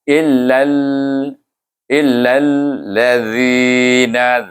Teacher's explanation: Zi itu kita baca panjang sebab sebelum ya baris bawah itu dia jadi mad asli